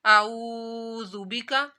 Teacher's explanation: اللہم انی اعوذ بکا، اعوذ بکا، واو ساکن سے پہلے پیش آ رہی ہے تو واو مدہ، اعوذ بکا، ایک الف کے برابر کھینچنا ہے اس کو